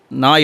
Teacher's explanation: நாக்குடைய நுனி மேல்வாய் அன்னத்துடைய முன்பகுதியை டச் பண்ணும், பல்லை விட்டு கொஞ்சம் உள்ளே வரும். அப்படி வரும்பொழுது பிறக்கும் எழுத்து இந்த நா எழுத்து வரும்.